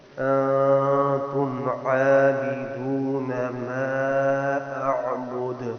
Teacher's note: عین کا بھی خیال، دال پہ قلقلہ